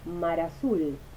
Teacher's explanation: la consonante final de mar silabifica con la primera vocal de azul